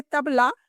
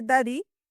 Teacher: त से ना तक ध्वनि बोलते समय जीभ दांत से सटती है और फिर हवा निकलती है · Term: दांत से आती